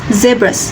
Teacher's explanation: The voicing is voiced, the place is alveolar, and the manner is fricative.